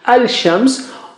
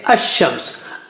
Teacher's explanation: So as far as Shamsi letters are concerned, you know that lam is sacrificed for ease of pronunciation. Like instead of saying al-shams, we say ash-shams